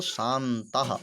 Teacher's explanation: शाम प्लस तः, तो यहाँ पर तकार है, तो इसी कारण मकार को क्या हो जाएगा, नकार हो जाएगा, तो शांतः यह प्रयोग बन जाएगा।